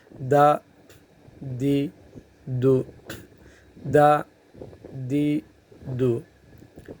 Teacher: تالو سے تھوڑا اندر کی طرف ہو تو یہ دال ہے